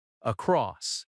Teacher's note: Across has stress on cross, across.